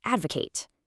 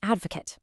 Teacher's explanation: Nailing that shift from the kate sound to the cut sound